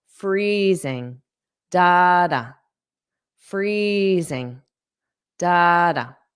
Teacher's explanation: So make sure you get that z, that voiced sound, zing, zing. But you want the syllable stress to be on the first syllable. Freezing.